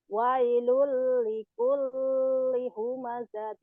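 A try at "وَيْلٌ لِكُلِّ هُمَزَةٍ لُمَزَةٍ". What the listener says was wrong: jangan ditahan. Wailul likulli humazatil lumazah. Double doang, jangan ditahan. Wailul likulli humazatil lumazah.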